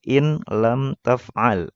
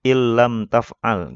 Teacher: Seharusnya dibacanya ada tasdidnya. Jadi ilam taf'al tanpa didengungkan ya, tanpa digunah. Ya, bukan begini nih, ilam taf'al itu salah ya. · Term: idgham bila gunnah